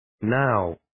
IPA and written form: naʊ (Now)